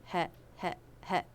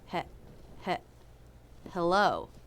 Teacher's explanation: It begins with the H consonant and has the e as in bed vowel. But this is very quick.